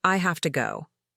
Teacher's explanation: That small word have changes to hafta